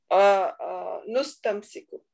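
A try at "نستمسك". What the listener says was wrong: No, why nu? Nastamsiku. So all the beginning was taking fatha sound, so we need to keep that. So, astamsiku and nastamsiku.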